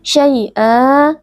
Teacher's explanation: bacaan lin karena ada ya sukun sebelumnya berharokat fathah. Ya sukun kita baca dengan lunak